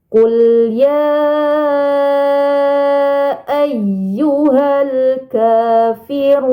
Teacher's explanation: Nah, di sini ada mad. Mad bertemu hamzah bukan dalam satu kata. Ini dinamakan mad jaiz munfasil. Maka panjangnya 4 atau 5 harokat.